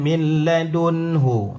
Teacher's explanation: Nun mati bertemu dengan ha. Jadi dibaca dengan jelas. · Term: izhar halqi